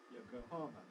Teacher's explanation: anglicized the stress is on the har